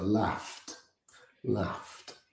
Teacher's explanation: with the GH making an F sound and the past D like a T